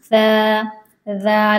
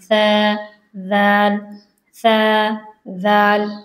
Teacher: जब आप ज़बान को दांतों पर टच नहीं करोगे तो इसमें सीटी आती है, सा और दाल, तो ये सीटी वाली आवाज़ नहीं होनी चाहिए, ये बिल्कुल सॉफ्ट आवाज़ होगी, सा दाल, आपके होंठ पीछे जाएंगे